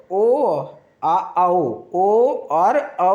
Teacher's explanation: कंठ और होठ भाग से जिसका उच्चारण स्थान हो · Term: कंठ होस्ट